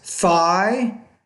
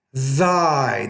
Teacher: They're both interdental consonants. The first sound is a voiceless interdental consonant. The second one is a voiced interdental consonant.